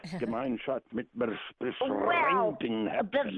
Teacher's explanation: you do have two different ways of saying the R in German. In southern Germany, you roll it.